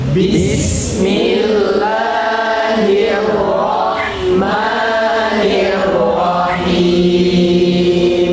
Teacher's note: Jadi ro terulang 2 kali diucapkan dengan tebal. Jadi ro tafkhim ketika berkaitan dengan fathah atau dhamma.